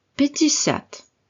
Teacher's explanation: nous avons deux voyelles ya, la dernière étant accentuée et prononcée ya, et la première atone presque comme un i.